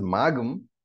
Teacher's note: So, incidentally, I hope you know that he pronounces magam. So, that gum is a Vedic form of pronouncing the anuswara